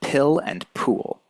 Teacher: you'll notice that there is a puff of air that escapes your mouth when you say a word like pool, right? There is a strong burst of air. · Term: aspirated P